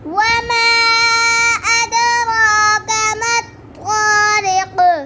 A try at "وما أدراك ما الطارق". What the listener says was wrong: वमा फिर पढ़ो. और आपने वमा नाक में पढ़ा है. ऐसे.